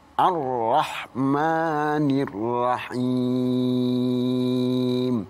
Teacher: ra ini termasuk huruf tafkhim yang harus ditebalkan